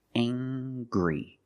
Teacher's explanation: We use the nasal sound m plus the hard g. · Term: nasal sound, plus the hard G